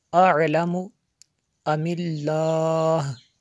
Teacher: لفظ اللہ کو پر نہیں پڑھیں گے بلکہ باریک پڑھیں گے